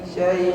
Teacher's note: ya sukun sebelumnya fathah madlin tidak ada penekanan tidak ada nabrah di sana